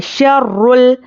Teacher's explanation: रॉ पर पेश और तशदीद है, तो रॉ को पुर पढ़ना है और सख्ती से पढ़ना है। शर्रुल, यहाँ पर हुरूफ़ खमरी का क़ायदा है, हुरूफ़ खमरी के शुरू में अलिफ लाम हो तो अलिफ को नहीं पढ़ेंगे, लाम से मिलाकर पढ़ेंगे।